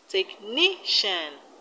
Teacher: And in technician, the stress is on NI.